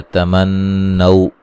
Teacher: تمنو نون مشدد پہ غنہ ضروری ہے